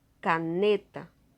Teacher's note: Veja que a sílaba mais forte é o ne.